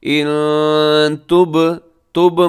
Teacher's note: با قلقلہ ہوگا کیونکہ با ساکن ہے